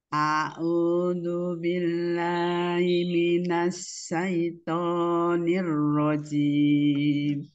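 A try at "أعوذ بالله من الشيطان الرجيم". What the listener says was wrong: Syainya jangan ke hidung, jangan naik.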